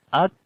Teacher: کاف کے اندر صفت شدت پہلے آتی ہے، پھر ہمس ہوگا یعنی سانس جاری ہوگا. اک یعنی کہ آواز بند ہوئی، شدت آ گئی، اور پھر اک، اور پھر صفت ہمس آئے گی اک، یعنی سانس کو جاری کیا، آواز کے اندر کمزوری پیدا ہو گئی.